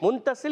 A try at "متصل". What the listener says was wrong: نون کی آواز نہیں ہے,